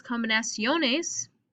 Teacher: once we add another syllable by adding e es combinaciones my second to last syllable is stressed